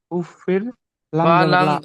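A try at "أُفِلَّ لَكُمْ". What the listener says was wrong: ফা লাম, ফা লামজের ফিল, এখানে একটা জেরকে বাদ দিয়ে লামের সঙ্গে মিলিয়ে পড়তে হবে। ফা লামজের ফিল, উফ ফিল। কাফ মিম পেশকুম। উফিল্লাকুম।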